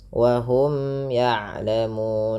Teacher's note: Wa hum ya'lamun, ada mim yang bertemu ya. Di sini pada dasarnya ada hukum tajwid berupa izhar syafawi, dibaca dengan jelas mimnya.